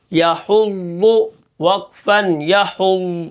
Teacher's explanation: ضاد کو ہم موٹا کر کے پڑھیں گے اور اس کو پورا پڑھنا ہے. اور بیچ میں ہم نے سانس نہیں نکالنا.